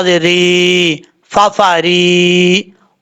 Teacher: اب یہاں پر را کے نیچے زیر ہے، را باریک پڑھا جائے گا، یہ باریک کی حالتوں میں سے ہے، اس لیے اس کو باریک پڑھیں گے۔ را کے بعد یا مدہ ہے، ایک الف کی مقدار، اس کو لمبا کر کے پڑھیں گے